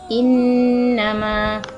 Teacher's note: Sepatutnya innama ni adalah wajib al-ghunnah, jadi perlu didengungkan kat sini.